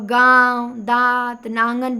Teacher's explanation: नाक और मुंह दोनों का काम है इसमें। दोनों से हवा निकलेगी। अंगूर बोलेंगे तो केवल नाक से निकलेगा ज्यादा हवा और निरनुनासिक में केवल मुंह से है। · और गांव, दांत, नांगन बोलेंगे तो नाक और मुंह दोनों का काम है, इसमें दोनों से हवा निकलेगी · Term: अनुनासिक